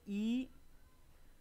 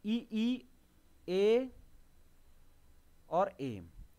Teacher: अग्रस्वर यानी कि जीभ के अगले हिस्से से बोले जाते हैं